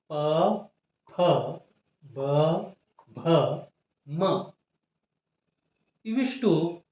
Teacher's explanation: ಓಷ್ಠ್ಯ ಅಂತ ಕರೀತೇವೆ ಓಷ್ಠ ಅಂದ್ರೆ ತುಟಿ ಎರಡು ತುಟಿಗಳು ಮೇಲ್ತುಟಿ ಮತ್ತು ಕೆಳತುಟಿ ಎರಡು ತುಟಿಗಳು ಒಂದಕ್ಕೊಂದು ಟಚ್ ಆದಾಗ ಸ್ಪರ್ಶ ಆದಾಗ ಈ ಪ ವರ್ಗದ ಅಕ್ಷರಗಳು ಉತ್ಪತ್ತಿಯಾಗುತ್ತವೆ